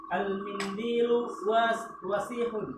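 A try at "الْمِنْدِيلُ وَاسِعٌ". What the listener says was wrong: Pendek wanya. Ulangi. Al-mindilu. Al-mindilu. Dari dulu kita sama-sama belajar, wasihun itu kadang ada panjangnya. Wasihun salah. Yang benar al-mindilu wasihun. Ya, wasihun pendek.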